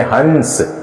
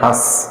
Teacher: हंस का उच्चारण करते हैं तो ध्वनि है वह आधी मुंह से निकल जाती है और आधी नाक से निकल जाती है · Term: अनुनासिक ध्वनि